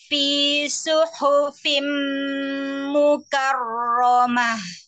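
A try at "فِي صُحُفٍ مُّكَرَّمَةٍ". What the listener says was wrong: Masih. Mah. Kurang turun ya ke pita, pita suara tenggorokan bagian tengah. Tapi bukan dari dada ya. He, itu kan dari dada. He, coba he, biasa kayak kita apa ya? Matahari. He. Matahari. He. Hari. Ya, itu ya pakai ha itu. Ha. Ha. Ah, ha. Mah.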